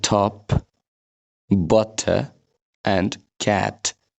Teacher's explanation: standard इङ्ग्लिसमा त भन्ने साउन्ड हुँदैन, ट भनेर पढिन्छ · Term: ट साउन्ड